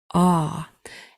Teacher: try this one now we've learned previously that aw says a it's a very jaw dropping deep sound a and we know Y at the beginning is a consonant